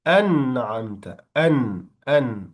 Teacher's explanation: the noon letter will be clearly pronounced because it's followed by the ayn. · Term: izhar